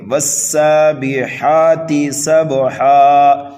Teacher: گے، والسابحات سبحا، سین کو سیٹی کی آواز دیں گے، اور با حروف قلقلہ میں سے ہے اس لیے یہاں پر قلقلہ صغیرہ ہوگا